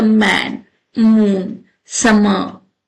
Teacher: So the M sound is voice bilabial nasal consonant, meaning it's made by the vibrating vocal cord and bringing both lips together and letting air escape through the nose